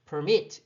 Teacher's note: 뒤쪽에 발음 강하게 읽는다고 치면 permit 이렇게 뒤까지 발음을 해야 되거든요. 그러니까 확실하게 뒤까지 발음을 해야 되니 이 법칙을 따라줘야 되는 거죠.